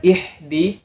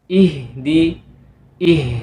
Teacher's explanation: huruf ha yang makhrajnya terletak di pangkal tenggorokan bukan huruf ha yang terletak di tengah tenggorokan